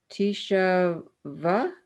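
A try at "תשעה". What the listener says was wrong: Close. So Tishava. So you need to put the sh and a together.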